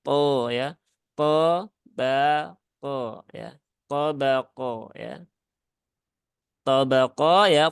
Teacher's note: po-nya tebal, baknya tipis, kemudian kofnya juga tebal ya.